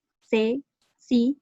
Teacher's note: pronuncian la letra S con el sonido interdental propio de la C ante E, I, o sea, C, sí, y de la Z en zonas no ceseantes.